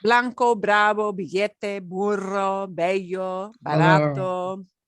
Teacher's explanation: Barato. So these B's, because they lead off, are a little bit stronger, but they're still not the puff of air